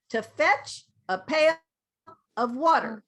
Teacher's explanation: To fetch, so this is to, but I don't say to, I say ta, because this is schwa. Is schwa, ta.